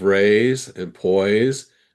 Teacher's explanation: verbs that end with s e have a z sound, not an s sound